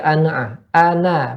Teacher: Fathah harus dibuka mulutnya. Kalau enggak kita akan kedengar ana'a. Nunnya seolah sukun.